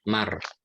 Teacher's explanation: Ra-nya jangan dikolkolakan Pak, jadi tidak maro tapi mar